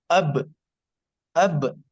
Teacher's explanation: اب با کا مخرج معلوم ہوا، دونوں ہونٹ آپس میں ملتے ہیں